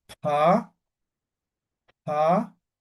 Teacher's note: cuando está con la H, se pronuncia como aspirando, como soplando hay que pronunciar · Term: la aspirada